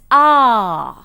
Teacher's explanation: You have the short vowel o as in cot, hot, pot, etc., which is present just above the open position in the back portion of the vowel diagram. The last back vowel is ah, which is a long vowel again, and it is present in the back open position